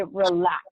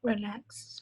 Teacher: It would be relax, and the stress is on the second syllable